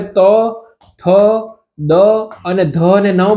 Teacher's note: ત બોલશો તો દાંતને અડશે જીભ થ બોલશું તો જીભને અડશે દાંતને ન બોલશું તો દાંતને અડશે